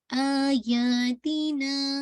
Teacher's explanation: تو فتح کی دوستی چونکہ الف کے ساتھ ہے تو سکون والا حمزہ الف کے ساتھ ریپلیس ہو جاتا ہے، اور یہ مد البدل کہلاتی ہے